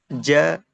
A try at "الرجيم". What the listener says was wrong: Itu masih ja. Ja. Kurang ke tengah ya. Ja. Ja. Itu ujung. Ja. Ja. Nah, sama makhrajnya dengan shin dan ya.